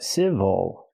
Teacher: good and this word is civil not civil but civil again the stress is on the first syllable so the second syllable is not stressed we cannot say ill we say oh civil for example the